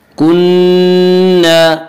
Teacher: الف مدہ الف ہمیشہ مدہ ہوتا ہے، الف سے پہلے زبر ہوتا ہے، الف مدہ کو ایک الف کے برابر کھینچ کر پڑھیں گے۔